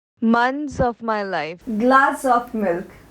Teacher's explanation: ऑफ को पहले word के एस कॉन्सोनेंट से जोड़ा गया है